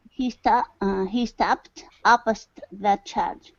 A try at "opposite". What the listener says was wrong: Opposite. Pronounce that ending there.